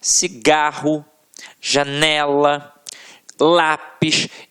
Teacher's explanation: paroxítonas, em que a sílaba tônica está na penúltima sílaba